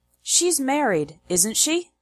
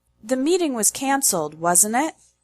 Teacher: It makes the statement into a question, asking the other person to confirm the information. The intonation when you use this type of question tag is high, low, high. The tone falls during the statement and rises again in the question.